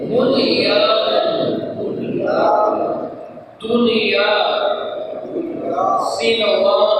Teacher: نون ساکن اور یا کو ایک ہی کلمہ میں آ کے اسے ادغام نہیں ہوگا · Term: ظاہر